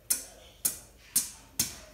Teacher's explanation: your tongue is flicking off the top of your mouth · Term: hi-hat sound